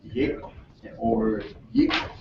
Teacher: yik, or yik, with two high tones